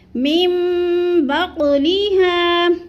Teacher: نون ساکن کو میم میں بدل کر اقلاب کریں گے، اس کو کہتے ہیں اقلاب۔